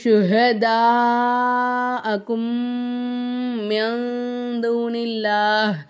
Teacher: சுக்குன் பெற்ற நூன்கிறது தான் தால் வந்துச்சுனாக்கா நூனே சாக்கினை நம்ம வந்து மூக்கால மறைச்சி குன்னா செஞ்சு ஓதணும்